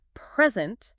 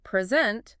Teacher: if I say present with the stress on the first syllable, I'm talking about a gift. But if I say present with the stress on the second syllable, I mean the act of giving something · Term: word stress